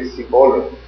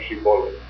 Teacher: there were communities in the world that have a problem saying Shin that says an S for Shin. They would say Sibolim instead of Shibolim.